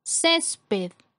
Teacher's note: Césped es una palabra que tiene 2 sílabas. La sílaba con mayor fuerza es la penúltima sílaba